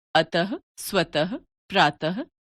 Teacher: विसर्ग का उच्चारण ह व्यंजन के रूप में किया जाता है